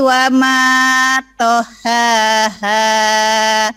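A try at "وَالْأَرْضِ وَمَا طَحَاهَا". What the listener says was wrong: Wal ardi wa ma tahaha. Bedakan ha kecil sama ha gede. Yang keduanya ha, dada. Tohaha. Dilatih ya yang keduanya.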